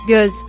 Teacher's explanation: The final vowel of göz, meaning eye, is a rounded vowel